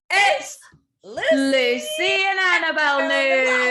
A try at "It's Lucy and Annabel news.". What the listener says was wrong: Why'd you go down? You have to give it more of like a crescendo. That was a disaster.